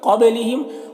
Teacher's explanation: نون میں اخفا ہوگا، نون کی آواز کو ناک میں چھپا کر پڑھیں گے۔ قبلہم، قاف حروف مستعلیہ میں سے پر پڑھیں گے، با میں قلقلہ ہو رہا ہے تو با میں قلقلہ کریں گے، اس طرح سے۔